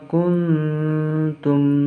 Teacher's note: Di sini ada huruf nun sukun bertemu dengan huruf ta. Ini dinamakan ikhfa syafawi, jadi cara membacanya huruf samar.